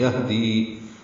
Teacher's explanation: ہا ساکن پہ ہمس ہوتا ہے، دی یا مدہ ہے، دو حرکات لمبا کریں گے.